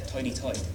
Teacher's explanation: the vowel as in verse, and oi, as in voice. They become almost the same.